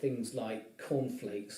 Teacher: So he pronounces two C sounds, but the first one is unreleased. He doesn't release the air at the end of it.